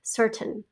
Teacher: it's just got kind of this uh schwa sound at the end